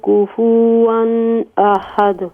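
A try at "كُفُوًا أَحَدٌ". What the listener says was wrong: کفوا احد. کفو آپ پیش کو لمبا کر رہے ہیں، صرف پیش ہے. کفوا احد.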